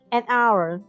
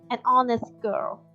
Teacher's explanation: ตัวHในที่นี้นะคะจะไม่ได้ออกเสียงฮะแต่จะออกเสียงเป็นอะค่ะซึ่งเป็นเสียงสระ